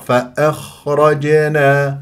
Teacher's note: هذه الساكنه مفخمه مرتبه رابعه يجري فيها الصوت والنفس من غير شخير